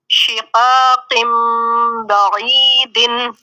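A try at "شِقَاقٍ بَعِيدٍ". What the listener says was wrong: با کی ساؤنڈ نہیں، بعید،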